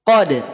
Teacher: Qad itu satu kalimat. Karena dal setelahnya tidak tersambung dengan bunyi yang lain, maka pantulannya lebih menonjol, lebih mantul, lebih nampak. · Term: qalqalah KBR